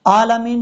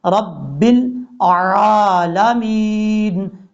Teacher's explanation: رب کے بعد جو حرف ہے عین ہے، عین کو حمزہ پڑھ جاتے ہیں، رب العالمین، یہ غلط طریقہ ہے، عالمین نہیں پڑھنا، عین پڑھنا ہے، رب العالمین اس طریقے سے۔